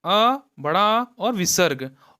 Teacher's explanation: तो स्वर का उच्चारण स्थान कंठ से है।